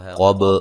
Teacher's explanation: قاف کو موٹا ادا کریں گے. با کو ہلا کے پڑھیں گے